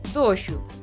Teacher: Coa final pasa algo parecido. A pronuncia é lixeiramente máis pechada e próxima a un U, sen ser un U.